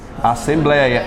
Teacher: É um ditongo também aberto.